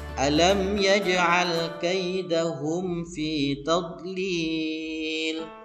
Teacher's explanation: Ini ada satu hukum sama seperti ayat yang pertama tadi, yakni izhar syafawi karena ada mim mati bertemu dengan ya. Maka mimnya harus dibaca dengan jelas. Hukum yang kedua yakni qalqalah sughra, yakni pada lafaz yaj'al huruf jim harus dibaca memantul.